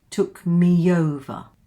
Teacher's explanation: We have two vowels here, E and O. What's the sound that comes between these two? Took me over. Can you hear it? It's a y.